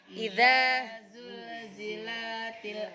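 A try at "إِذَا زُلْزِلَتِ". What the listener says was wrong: la-nya pendek, kenapa dibaca panjang?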